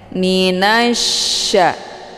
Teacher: Sya dengan posisi tengah lidah itu terangkat ke langit tapi tidak sampai melengket